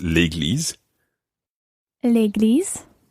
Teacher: Now, something that you've got to think about here is the fact that église is a feminine noun. So if it weren't for that vowel that it began with, it would be la église, but you can't say that in French, so it's l'église.